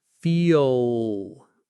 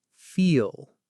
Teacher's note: My tongue tip might come up a little at the very end, but the main work is happening at the back. It's like there's a little sound right before the L, like feel. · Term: dark L